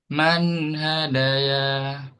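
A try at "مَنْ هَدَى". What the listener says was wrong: Ini enggak dibaca sebagai alif. Jadi alifnya ini cuma numpang di ya ya.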